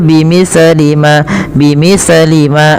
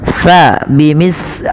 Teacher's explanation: hati-hati di dalam melafalkan huruf sa jangan sampai sa ini memantul ya teman-teman atau dia membacanya dengan huruf sin. Contoh memantul bi mis li ma bi mis li ma itu memantul atau dia membaca dengan sin bimislimal. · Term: huruf tsa